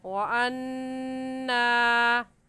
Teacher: وَأَنَّا میں نون مشدد ہے اور نون مشدد پر ہمیشہ غنہ ہوتا ہے، اس لیے یہاں پر غنہ کر کے پڑھیں گے، اور ایسے لفظ پڑھا جائے گا وَأَنَّا، نون الف نا کو کھینچیں گے۔